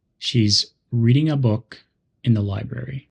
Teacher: notice how the words a in and the are quick and soft she's reading a book in the library these function words help